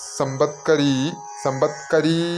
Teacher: വെറും സമ്പത്കരിയല്ല, സമ്പത്കരീ എന്ന് നീട്ടേണ്ടതാണ്.